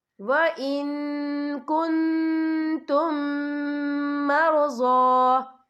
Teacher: اور آگے دیکھیں وَإِن كُنتُم، یہاں میم ساکن ہے، میم ساکن کے بعد جو ہے میم مشد والا حرف آ رہا ہے تو یہاں پر ادغامی شفوی ہوگا، ہم پچھلے میم کو اگلے میم میں مدغم کریں گے اور ہم یہاں غنہ بھی کریں گے